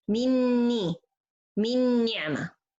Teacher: The غنة I hear here, it's the غنة from the next nun. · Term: إدغام كامل بغنة